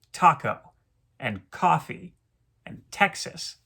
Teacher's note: taco and coffee and texas all follow this trochaic rhythmic pattern